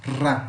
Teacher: Aqui, ó, novamente, dois R's, ó. Então é um vibrato.